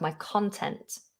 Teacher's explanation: The stress is different, so it slightly changes the vowel. My content, my work, my content. The stress is at the beginning, my content.